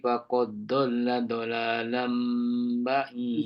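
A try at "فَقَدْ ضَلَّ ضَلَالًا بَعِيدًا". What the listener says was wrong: Kalau boleh tebalkan sikit lagi dot boleh. Tebalkan sikit lagi dot. Matikan dulu dal tu. Faqad dhalla.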